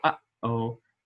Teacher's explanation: it is a little stop in the throat so just like when you say uh oh you stopped you